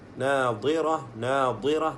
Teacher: നാദിറ നാദിറ, നാവിൻ്റെ സൈഡിൽ നിന്ന് വരണം ദ്വാദ്.